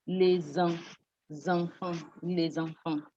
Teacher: when you have an S in front of a vowel sound, it gives a Z sound.